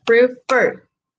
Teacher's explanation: Si yo lo divido en sílabas, prefer, lo más fuerte está al final. Por lo tanto, lo que yo hago es a esa última consonante la duplico, sea cual sea, y posteriormente puedo agregar el ing. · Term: sílaba tónica